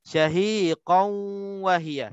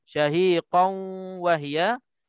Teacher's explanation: tanwin bertemu dengan waw, hukumnya idgham ma'al gunnah naqis. Cara bacanya dengung 2 harakat.